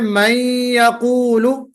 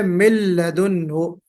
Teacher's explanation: کہیں ادغام مع الغنہ ہوتا ہے جیسے من یقول، اور کہیں ادغام بلا غنہ ہوتا ہے جیسے من لدنہ